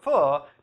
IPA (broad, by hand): f